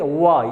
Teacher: तो इसमें क्या होता है, दोनों जो लिप्स हैं आपस में टच करती हैं, उस जब ये वाला फ बोलते हैं। लेकिन इसको बोलने के लिए हमारा निचला होठ जो है, निचला होठ क्या हो जाता है, थोड़ा सा वृत्ताकार हो जाता है और निचले दांत का हिस्सा का सहारा लेता है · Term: दंतोष्ठ व्यंजन